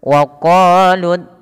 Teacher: Kenapa di sini lam tebal karena dia huruf lam yang didahului dengan huruf fathah